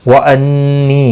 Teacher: نون مشدد پر غنہ ہوگا، نی یا مدہ ہے، 1 الف کے برابر کھینچ کر پڑھیں گے